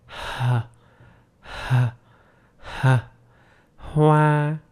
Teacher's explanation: it is a voiceless sound, so you don't vibrate your vocal cords, like h, h, h, hoa.